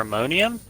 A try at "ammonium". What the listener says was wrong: There's no R. A-M-M-O-N-I-U-M. Yeah, you said ammonium with an R. No, not a O, R.